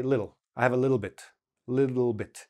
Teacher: when you have two T's together and in normal speed, it sounds like a D.